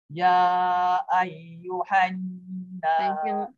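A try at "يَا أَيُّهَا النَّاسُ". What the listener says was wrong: panjang ya tu. Empat harokat.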